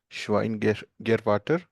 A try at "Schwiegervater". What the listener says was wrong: This is not Schwein. Schwieger. Schwein matlab pig.